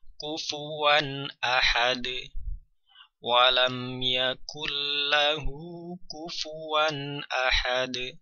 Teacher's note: Jadi bunyi tanwin atau bunyi nun sukun dibaca dengan jelas karena setelahnya ada huruf berupa hamzah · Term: izhar